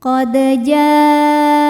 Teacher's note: maka jim dipanjangkan boleh empat boleh lima harakat